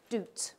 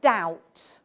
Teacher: say doot with the vowel o and I say doubt with the vowel ow